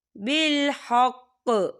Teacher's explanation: وقف کی صورت میں قاف جو ہے ساکن ہو جائے گا اور یہاں پر قلقلہ ہوگا